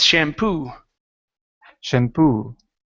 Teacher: stress at the very end